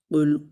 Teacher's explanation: قاف کو موٹا پڑھیں گے اور لام ساکن ہے، اس کو ہلائیں گے نہیں